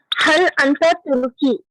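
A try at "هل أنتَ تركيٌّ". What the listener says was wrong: पूरा बोलिए, तुर्की यून, तुर्की यून।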